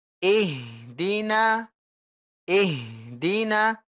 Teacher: Jangan kasih jarak antara ih dengan di.